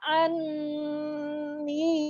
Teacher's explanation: Dengung itu adalah di rongga hidung. Maka anni terasa di rongga hidungnya.